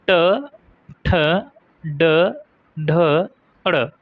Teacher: ट वर्ग मींस ट, ठ, ड, ढ, ड पांचों अक्षर हो जाएंगे और पांचों अक्षर के लिए मूर्धन्य होगा।